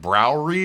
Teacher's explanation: it's a rolling r in the back of the mouth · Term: guttural r